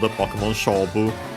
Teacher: most likely here it becomes a compound, Pokémon Shobu. Most likely the accent is on the show. And not necessarily because it was the accent of the word on its own, but yeah, simply because of the rules of, or at the very least tendencies of accents of such compounds.